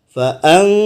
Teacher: terdapat nun ketemu dengan za. Maka hati-hati dalam membaca, harus ditahan selama 2,5.